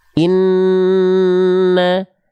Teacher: Nun bertasydid itu dia ditahan penahanannya itu dua harakat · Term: gunah, gunnah